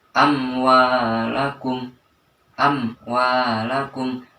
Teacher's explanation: seperti contoh amwalakum di situ terdapat huruf mim bertemu dengan wawu maka dibaca Idhar atau jelas mim itu dibaca di bibir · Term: Idhar syafawi